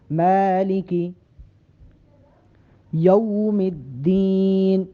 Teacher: میم کو لمبا کر کے پڑھیں گے ایک الف کے برابر